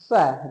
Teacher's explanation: जो स है ये अघोष वर्ण होता है